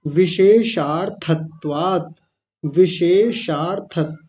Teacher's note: सबसे पहले तालव्य शकार है फिर मूर्धन्य शकार है और दोनों का अलग-अलग उच्चारण करना थोड़ा मुश्किल काम होता है